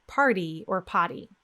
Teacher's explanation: you need to produce a quick D in place of the letter T or double T that you see in words like party or potty.